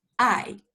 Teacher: it's also called a falling tone it sounds a little bit like angry because it's sharp and short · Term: fourth tone